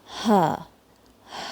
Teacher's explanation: ہا میں ایئر بھی جاری رہتی ہے اور ساؤنڈ بھی جاری رہتی ہے جب اس پہ سکون ہوتا ہے. ووکل کارڈز کمپلیٹلی ریلیکس ہوتی ہیں.